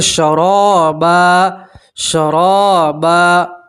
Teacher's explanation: بردوں ولا شرابا، اور آپ 2 زبر کی تنوین کے اوپر وقف کریں گے تو 2 زبر کی تنوین کو ایک زبر اور الف سے پڑھیں گے